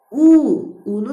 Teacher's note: Ona görə bu dodaqlanan saitdir. Unu da söyləyərkən dodaqlar önə uzanır. Dodaqlanan saitdir.